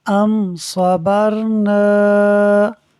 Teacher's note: میم ساکن کے بعد صاد حرف با اور میم کے علاوہ ہے، اظہار شفوی ہوگا، یعنی میم ساکن میں غنہ نہیں کریں گے۔